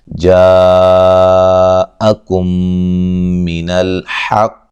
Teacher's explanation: قاف کو خوب موٹا کرتے ہوئے قلقلہ کرتے ہوئے وقف کریں گے ، ٹھیک ہے، اگر وقف نہیں کرنا تو حقی پڑھیں گے،